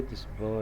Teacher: this ba is voiced, bilabial, plosives.